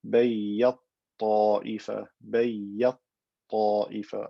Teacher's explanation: I've merged the ta into the ta, creating a ta with shadda.